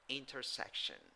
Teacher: in the fourth syllable, you have I and O when you write it, but in the pronunciation, you have schwa.